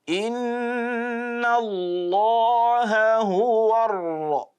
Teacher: There is flapping, there is that bit of rolling, that is a takrir, but it has to be minimal.